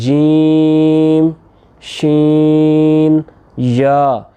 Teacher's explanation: ان تینوں کا سیم مخرج ہے، وہ کیا زبان کا درمیانہ حصہ اور تالو کا درمیانہ حصہ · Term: حروف شجریہ